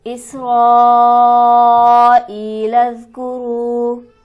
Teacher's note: ہمارے پاس حمزہ پر حرف مدہ موجود ہے، یا ساکن سے پہلے زیر ہے، اسے ہم کھینچیں گے 1 الف کے برابر۔ کرو کے را کو ہم موٹا پڑھیں گے، کیونکہ را پر اگر زبر یا پیش آ جائے تو اسے ہم موٹا پڑھتے ہیں۔ را پر ہمارے پاس حرف مدہ بھی موجود ہے، واو ساکن سے پہلے پیش ہے تو لہٰذا اسے ہم 1 الف کے برابر کھینچ کر پڑھیں گے۔